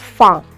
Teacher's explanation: dalam bahasa Inggris untuk bilang A itu ada beberapa cara, dan ini adalah yang A terbuka lebar